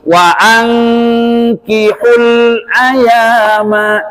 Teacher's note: nun mati ketemu kaf, ikhfa hakiki dengung